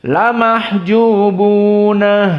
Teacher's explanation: qiraah Ya'qub dibaca dalam keadaan ha as-saktah